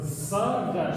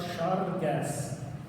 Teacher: они произносят «ц» не как «с», а как «ш». И звучит это как «шаргас». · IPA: [шæргæс]